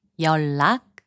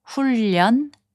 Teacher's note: So when the final consonant 니은 is placed before 리을, its sound changes to 리을.